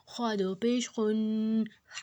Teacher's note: اس کو حلق سے نکالنا ہے اور اس کو موٹا کرنا ہے۔